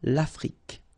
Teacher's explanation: L'Afrique, same thing here, final E, it's only the K at the end that you will hear